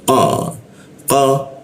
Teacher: lidahnya kita ee naikkan ya, sehingga tidak ada hembusan udara ketika membaca qo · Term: huruf qa